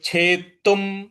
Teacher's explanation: जो छे के बाद आधा त है उस पे आपको आघात देना है